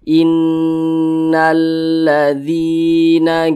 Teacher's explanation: itu tepat berada di belakang huruf Ya Sukun maka dibaca panjang maka dzi dibaca panjang Mad thi'i panjangnya itu dua harakat atau kira-kira dua ketukan